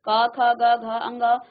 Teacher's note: क जो वर्ग है उसको उसका उच्चारण हम कंठ से करते हैं